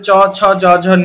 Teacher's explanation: এই পাঁচটি কই তালব্য বর্ণ কারণ এগুলি আমার তালুর উচ্চারণ